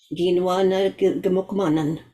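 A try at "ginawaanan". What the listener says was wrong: Yeah, awesome. Very close. But you said quinoa. That almost sound like, is this your knives for you plural, eh? Quinoa. Quinoa na gimokamanan. Is this your guys' knives? Yeah, but Gina one, yeah, would be. Gina one.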